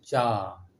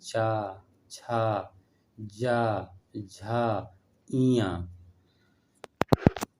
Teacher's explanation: चा छा जा झा इयाँ, इनका उच्चारण स्थान तालु से है। जैसे बोलिए चा, तालु से निकल रहा है ना, चा छा जा झा इयाँ। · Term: चा वर्ग